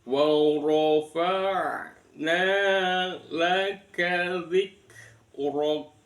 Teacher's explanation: waw ro berharokat fathah dibaca tafkhim